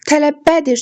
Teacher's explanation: Tələbbədir sözündə vurğu üçüncü hecəyə, yəni bəyə düşür.